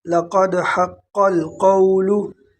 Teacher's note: لقد حق القول، لقد حق القول، لقد قاف کو موٹا اور قاف یہ دوسرا قاف بھی موٹا ہے اور قول کا قاف بھی موٹا ہے